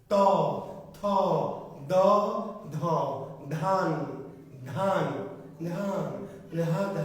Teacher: জিহ্বাটাকে কি করতে হবে, একটু চেপে দাঁতের সাথে, যত একটু চেপে লাগাবেন তত উচ্চারণটা কি স্পষ্ট হবে। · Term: দন্ত বর্ণ